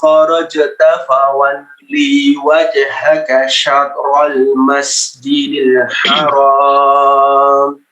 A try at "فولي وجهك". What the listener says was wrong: Fawalli wajhaka, lamnya pendek. Fawalli wajhaka, langsung ke huruf waw.